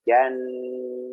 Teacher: ingat peringatan-peringatan nun tasdid itu nah ditahan lama